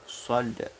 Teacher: Nah, berbeda dengan melafalkan huruf sin. Shad itu membacanya dengan bibir agak ke depan seperti hendak bersiul. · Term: huruf shad